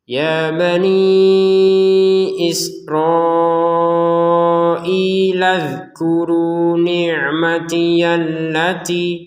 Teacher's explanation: perhatikan di sini huruf dzalnya jangan dipantulkan sehingga terdengarnya Isra'ilad, jangan sampai seperti itu. Cukup tidak ada pantulan sama sekali